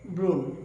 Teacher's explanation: শব্দের শুরুতে যদি অধ্বনি থাকে এবং এরপরে যদি রফলা থাকে আমরা অধ্বনির উচ্চারণ ওকারান্ত করব। যেমন ব্রণ উচ্চারণ হবে ব্রণ।